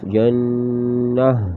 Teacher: وقف میں گول والی ہا بنے گی، لیکن جب ہا کو ظاہر کریں گے جھٹکا نہیں دیں گے۔